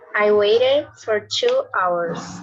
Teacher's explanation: So we add an extra syllable because the word ends with a T sound. Remember, T or D, you pronounce it as a id.